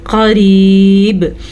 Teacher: قاف موٹا جبکہ را باریک